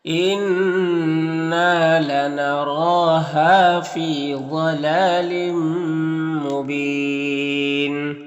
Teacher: ضاد حروف مستعلیہ میں سے پر پڑھیں گے۔